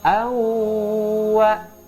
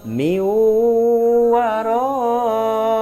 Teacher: memasukkan bunyi nun sukun atau tanwin ke dalam huruf berikutnya by disertai guna dengung melalui rongga hidung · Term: Idgham Bighunnah